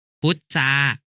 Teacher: พยัญชนะตัวหลังเป็นรอเรือแล้วออกเสียงกลายเป็นซอโซ่ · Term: คำควบไม่แท้